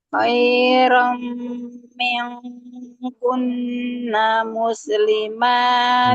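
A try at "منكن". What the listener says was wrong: Miong, jangan miong. Miong, jangan miong, tapi ming. Ming, jangan miong. Miong berubah, jangan kasrohnya jangan berubah. Jangan berubah suaranya, tapi dia mingkun, ya.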